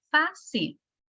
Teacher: lleva su sílaba tónica en fa